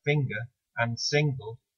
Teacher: the letter N in words like finger and single is actually pronounced as an engma all by itself